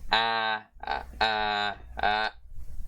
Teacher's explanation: This is ash, or front, near open, unrounded vowel.